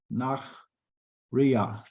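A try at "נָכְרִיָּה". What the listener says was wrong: Nochriya. Nochriya. This is a kamatz katan. Nochriya. Nochriya. the kamatz katan.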